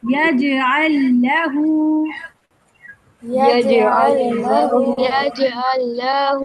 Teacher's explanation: یہ دونوں لام ایک ہی پڑھے جائیں گے. یہ دونوں کا جو دونوں کا مرج ہو جائے گا اور ایک ہی لام کو پڑھیں گے آپ آگے.